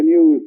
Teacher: He doesn't drop the yod in news